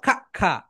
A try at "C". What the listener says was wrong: তোমার শুধু সি সাউন্ডটা ভুল হয়েছে, ওটা 10 বার পড়ে নাও।